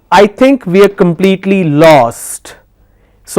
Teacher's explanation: I'm emphasizing on lost.